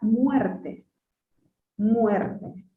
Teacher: Una vocal cerrada acompañada de una vocal abierta. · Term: diptongo creciente